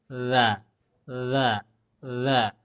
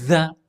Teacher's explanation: ya Enggak boleh ditekan enggak boleh tapi tempel aja nah gitu jadi enggak ada keluar anginnya hanya suaranya